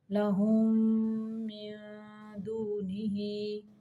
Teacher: साकिन मीम को मुतहर्रिक यानी हरकत वाले मीम के अंदर मिला के पढ़ते हैं। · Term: इदगाम